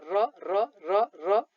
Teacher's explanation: अर्को छ कम्पित वर्ण भनेको के हो कसरी उच्चारण हुन्छ भने जिब्राको अग्रभागले वस्य भाग जुन हामीले अघि पढेका छौं त्यो भागलाई छुँदा जिब्रो थर्किएर उच्चारित हुने वर्णलाई कम्पित वर्ण भनिन्छ